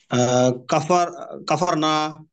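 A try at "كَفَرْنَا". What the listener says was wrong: টান হবে না, না না টান হবে না, টান হবে না, কাফার না।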